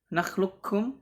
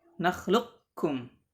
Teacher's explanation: sebagian membacanya dengan idgham kamil ya, nakhlukum langsung dileburkan ke kaf, dan sebagian lagi membaca dengan idgham naqis